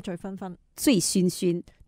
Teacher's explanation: 这醉字呢读的时候呢千万不要翘 ，哦，因为呢它的声母部分呢很容易翘的，所以我们就是说你要学好普通话要掌握好的第一个什么呢，就是平翘舌音的字你一定要分得清楚，嗯，都是那句了，嗯，如果不清楚的地方呢查字典啊，对，一目了然啊，对对对对对，嗯，就会知道那个拼音究竟怎样写出来的，那就没那么容易混淆，对，所以有一个规范嘛，对吧，嗯，我们有一个规范的话，该平的就平，该翘的翘哈，就两者之间呢就不要混淆了，嗯，又知道了，多谢 ，嗯，我们下个星期同样时间又听下第二些同学的表现。